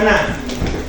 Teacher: el fonema na es nasal, alveolar, oclusiva y sonora.